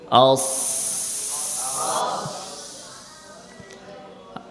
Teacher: বলে না সবাই, কোন সিফাত? রখাবার সিফাত পাওয়া যাচ্ছে, অর্থাৎ এখানে আওয়াজ জারি থাকবে।